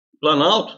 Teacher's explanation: repare que o som do Ó vai pro espaço então houve perda de um fonema